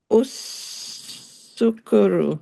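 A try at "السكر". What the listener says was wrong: There's no u sound. There's no u sound. It's a us. It's a us sound.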